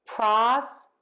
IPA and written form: ˈprɑstəˌtut (PROSTITUTE)